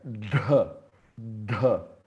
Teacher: Esse cara é com muito prana. Então ele é língua no céu da boca, fazendo o som de D com uma tossezinha. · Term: D murda com Mahaprana